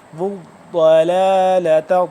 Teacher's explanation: ضاد موٹا بھی ہے اور تھوڑا سا کھینچ کے پڑھنے ہو رہا ہے کیونکہ یہ تشدید ہو گیا